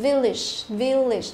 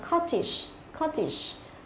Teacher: không đọc là âm a mà chúng ta phải đọc nó là âm i đúng không, âm i. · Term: y ngắn